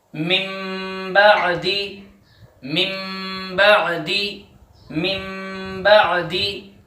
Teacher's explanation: دیکھیے کہ نون ساکن کے بعد بعدی جو با آیا ہے، نون ساکن کو میم سے، چھوٹی جو میم ہے اس سے بدل دیں گے اور غنے کے ساتھ پڑھیں گے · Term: اقلاب